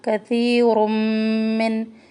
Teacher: تنوین اور میم مشد کا ادغام کر رہے، من نون پر اظہار کرے.